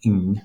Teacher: the velar nasal sound is that NG sound when you're forming the progressive aspect of a verb, like drinking